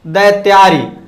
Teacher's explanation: ये ह्रस्व आ और ह्रस्व आ क्या हो जाएगा, दीर्घ आ हो जाएगा